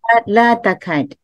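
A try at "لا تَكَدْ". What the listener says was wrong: Ya, jangan panjang. Kad. Pendek saja.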